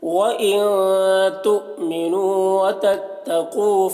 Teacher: وَإِن نون میں اخفا ہوگا، تُؤْمِنُوا حمزہ ساکنہ جھٹکا لگے گا، نو میں واو مدہ ہے، ایک الف کے برابر کھینچ کر پڑھیں گے۔